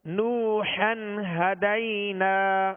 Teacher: ہا کو وسط حلق سے، درمیان حلق سے ادا کریں